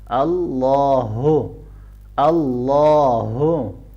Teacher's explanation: لا کو موٹا پڑھیں گے اور ہا کو ہم ہیوی پڑھیں گے گلے کے نچلے حصے سے